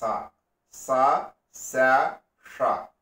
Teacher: మూర్ధన్యంలోంచి గాలి వదిలితే ష. దవడల్లో నుంచి గాలి వదిలితే శ. దంతాల్లో నుంచి గాలి వదిలితే స.